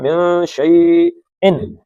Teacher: یہ نون کو ناک سے نکالا ہے